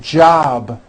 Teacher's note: job ends in a B, which is a voiced sound. Job. It's not jop with an unvoiced P.